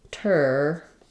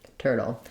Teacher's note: So if I were to rewrite that, I would write it like turtle. Basically no vowel there because I'm moving directly from my flap T into my syllabic L, dull, just a light little touch with barely any vowel.